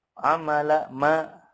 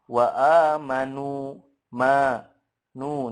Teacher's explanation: Pastinya kalau kita memegang hidung itu ada gunahnya, tapi hanya satu harokat saja. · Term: gunah angkos